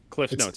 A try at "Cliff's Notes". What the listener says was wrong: It's called Cliff's Notes. It's not Cliff Notes. It's Cliff's Notes.